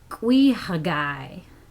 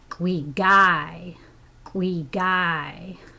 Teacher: okay the huh has been dropped in northern Haida